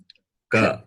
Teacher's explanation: The sound stops. Sound stops at the throat itself. The sound stops at the throat itself.